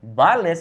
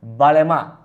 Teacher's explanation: because he's from Puerto Rico, he kind of cuts off the S. Instead of saying vales, he says vale más.